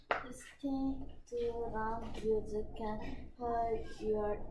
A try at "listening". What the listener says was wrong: listening이라니까, listening. T가 소리 안 난다니까.